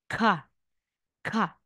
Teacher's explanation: aspirated po sila kapag ito po siya ay nalagay sa initial or sa middle